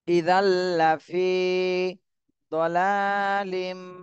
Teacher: তানভীনের পরে ইদগামে বা গুন্নার হরফ এজন্য গুন্না সহ মিলাতে হবে